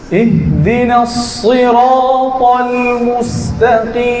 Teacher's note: সদ উচ্চারণ করার সময় ঠোঁট গোল হবে না। · সদে যখন জের হবে তখন উচ্চারণ কম হবে, কিন্তু সিন হবে না।